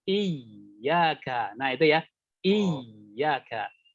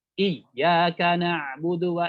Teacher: Jadi kita alirkan suara, huruf ya-nya ditekan, tapi suaranya mengalir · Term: mengalirnya suara